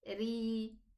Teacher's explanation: Because this ra has a kasra, it's not elevated. It is lowered.